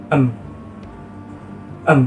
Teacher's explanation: berfungsi sebagai titik artikulasi dan artikulator proses artikulasinya ialah artikulasi Nasa terjadi apabila jalur udara dihambat oleh daerah artikulasi namun udara berhasil keluar lewat hidung · Bunyi M termasuk bunyi konsonan, yaitu bunyi yang mana ketika diucapkan terhambat oleh alat ucap. Bunyi M letak artikulasinya pada bilabia, yaitu dihasilkan dengan cara mempertemukan kedua bibir. Jadi bibir atas dan bibir bawah sama-sama berfungsi sebagai titik artikulasi dan artikulator. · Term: artikulasi nasal